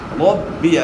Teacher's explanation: ربی را کے اوپر زبر ہے، را کو موٹا ادا کرنا ہے